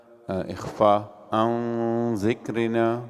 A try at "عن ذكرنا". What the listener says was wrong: okay ये गुन्ना को थोड़ा बारीक करो عن ذكرنا here